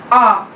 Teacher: Back vowel open है, lips की position अनराउंडेड है।